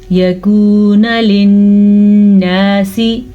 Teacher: نون پہ ہم نے غنہ کیا کیونکہ نون پہ شد ہے.